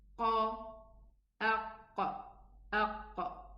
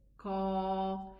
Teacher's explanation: The difference is that the kaf, if I elevate it, it's going to be almost a qaf. So the qaf is a heavy letter and the kaf is a light letter. Harf mufakham, the qaf, and harf muraqqaq, mustafil, is the kaf.